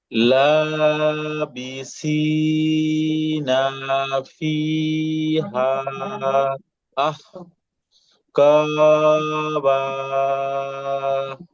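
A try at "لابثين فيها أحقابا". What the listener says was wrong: হ্যাঁ মাশাআল্লাহ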